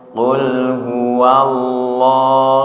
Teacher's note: lohnya dibaca tebal karena didahului fathah